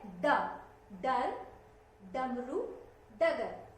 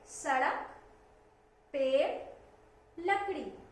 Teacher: हमारी जो जीभ है ऊपर जाती है और झटके से नीचे आती है।